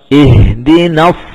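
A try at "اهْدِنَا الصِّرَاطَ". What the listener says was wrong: jadi tidak buru-buru menebalkan nun.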